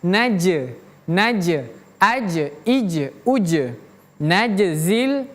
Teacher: huruf jim kalau dia sukun atau dia mati, jimnya jim mati, maka huruf jim tersebut ada qolqalah atau memantul. Jadi, ada pantulan suara.